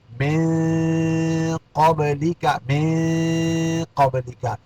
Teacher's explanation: نون ساکن کے بعد یہاں قاف آ گیا، حروف اخفا میں سے یہاں اخفا ہوگا